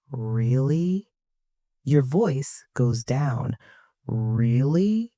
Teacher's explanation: Your voice goes down. Really? That low sound shows you are sad or disappointed.